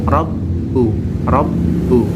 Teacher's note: bacaan pendek ka juga bacaan pendek rbu rbu tempat bacaan tasdid berupa ba yang ditasdid cara membacanya ditekan dan ditahan dua harakat